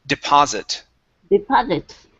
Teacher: Instead of deposit with an O sound, it's an ah.